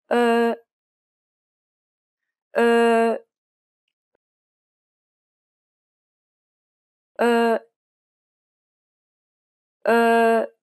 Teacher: this sound doesn't exist in English but it's very similar to the U in the word fur be sure to compress your lips uh uh uh uh the last vowel sound is this sound